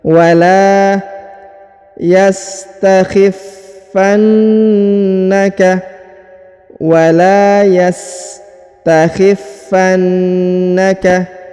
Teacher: Huruf la dipanjangkan 2 harokat ya, karena di depannya terdapat alif.